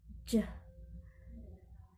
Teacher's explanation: The place of articulation is palato-alveolar. The manner of articulation is affricate. J sound include voice.